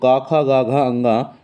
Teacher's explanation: क ख ग घ अंग जो है वो कंठ ध्वनियों में जाने जाते हैं